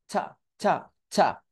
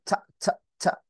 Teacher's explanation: ট টাকে বাতাস সহ উচ্চারিত করব এবং সেটাকে ধাক্কা দিব বাহিরের দিকে ধাক্কা দিব নাম্বার ওয়ান বাতাস বের করতে হবে নাম্বার টু জিহটাকে উপরের দাঁতের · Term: রিলিজটি